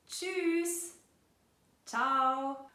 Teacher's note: Da ziehen wir oft die Vokale beziehungsweise den Umlaut ein bisschen in die Länge